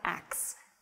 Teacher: that is reversing the consonants in the word “ask.”